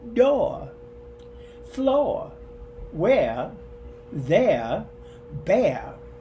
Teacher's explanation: we drop final R's like bar, star, car. We drop, or sometimes we substitute that dropped R with a schwa sound.